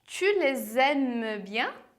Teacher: fazendo a liaison, ou seja, a ligação entre as duas palavras e fazendo aquele sonzinho de Z